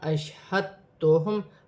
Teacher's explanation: شین ساکن ہے، شین کو حمزہ کی حرکت کے ساتھ ملا کر پڑھا جائے گا۔ دال بھی ساکن ہے، آگے تا مشدد ہے، دونوں کو ملا کر پڑھا جائے گا جیسے ہا دال تا زبر ہت، تا پیش تو، ہت تو، ہا میم پیش ہم، اشہد تو ہم۔